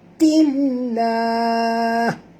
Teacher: lam pada lafaz jalalah dibaca tipis kerana ta berbaris di bawah